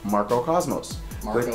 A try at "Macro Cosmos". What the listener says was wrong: You said Marco Cosmos. What the hell's Marco?